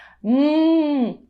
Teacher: que está presente em navio no caso da consoante em hum os dois lábios se tocam e este ponto de articulação é conhecido como bilabial